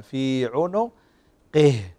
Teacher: في عنقه كسرة مع إظهار الهاء